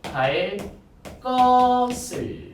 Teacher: 뭐뭐 할 뒤에 오는 예사소리 얘는 뭐로 바뀐다? 된소리로 바뀐다.